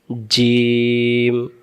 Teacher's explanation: জিম অক্ষর জিহ্বার মাঝখান থেকে শক্ত করে পড়তে হয়